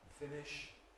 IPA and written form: ˈfɪnɪʃ (finish)